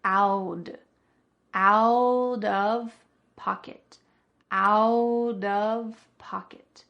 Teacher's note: this is another extremely common American pronunciation technique where a T between two vowels is going to change to a D sound. This is called a flap T usually because the T is changing to a D.